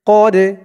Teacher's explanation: ফা ইন আসাবাতকুম মুসিবাতুন ক্বালা ক্বাদ আনআমাল্লাহু, ক্বাদ, কফ দিয়ে দাল ধরবে, দালটা কলকলার হরফ ধাক্কা দিয়ে পড়তে হবে